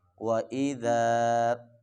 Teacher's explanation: ذال کو ذرا نرمی کے ساتھ پڑھنا ہے، زا نہیں پڑھنا ہے، سیٹی کی آواز نہیں آنی چاہیے۔ وَإِذَا پڑھیں گے تو یہ غلط ہو جائے گا، اس کو نرمی کے ساتھ پڑھنا ہے۔